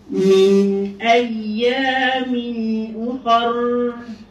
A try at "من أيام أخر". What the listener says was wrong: أخر. Oh kakakku jadi laju kak. Min ayamin ukhar. Ukhar yang tu ikhtilas. Kha. Hamzah dengan kha kan. Ukhar laju je kat situ kan. Min ayamin ukhar. Dia satu-satu.